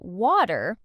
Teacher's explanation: More like waiter. The T transforms into a soft D sound when it's between vowels. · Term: flap T